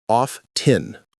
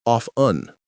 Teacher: The T is almost silent. The T is barely pronounced. It's a soft sound.